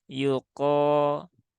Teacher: naikkan pangkal lidah untuk mengucapkan huruf qof · kof ini juga huruf tebal, maka naikkan pangkal lidah untuk mengucapkan huruf kof. Yuko, ko, ya, bukan ko, yuko dengan mecucu, dengan manyun, tetapi tetap dibuka mulutnya, kemudian naikkan pangkal lidahnya.